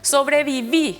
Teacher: la extensión de las palabras termina en e lleva tilde sobreviví se recarga la voz en la última sílaba es aguda